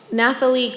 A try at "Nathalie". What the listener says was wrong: you can just, yeah, the H is silent.